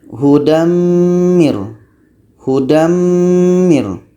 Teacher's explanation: Tanwin hilang masuk kepada bunyi mim. Masuk itulah yang disebut dengan idgham.